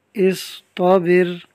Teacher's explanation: آگے لفظ ہے اصطابر، اب اس میں صاد اور طا حروف مستعلیہ میں سے ہیں، ان کو ہم پر پڑھیں گے اور را ساکن سے پہلے با کے نیچے زیر ہے تو اس کو باریک رکھیں گے